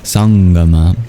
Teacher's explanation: the anusvara becomes a guttural nasal